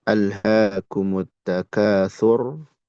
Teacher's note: di sini ro sukun sebelumnya domah berarti tebal